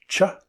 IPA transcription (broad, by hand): tʃ